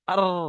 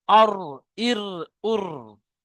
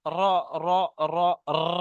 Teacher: জিভের আগার উল্টো পিঠ এবং তার বরাবর উপরের তালুর সাথে লাগিয়ে উচ্চারিত হয় র। র। দেখেন, জিভের আগার উল্টো পিঠ মানে এটা যখন উচ্চারণ হয় জিভটা ঘোরে।